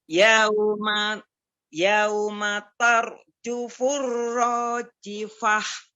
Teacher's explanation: Itu tar ro dibaca tebal karena sebelumnya berharokat fathah. Naam. Ro sukun Tar. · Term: tafkhim tebal